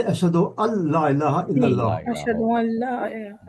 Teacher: तो अशहदु अल्लाह इलाहा, उसके बाद हाँ राइट, नून के ऊपर सुकून है और लाम के नाम पे ऊपर चले जाएगा वो अशद्दा है, अल्लाह। तो नून नून साकिन हो जाएगा, नून नहीं पढ़ा जाएगा। तो तजवीद के उसूल के लिहाज से अशहदु अल्ला इलाहा इल्लल्लाह, अशहदु अल्ला इलाहा जी जी हाँ, नून नहीं पढ़ा जाएगा।